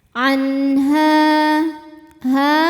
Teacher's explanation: adalah Mad Thobi'i dahiri sebab ada Alif yang sebelumnya berharakat fathah cara bacanya ha dipanjangkan dua harakat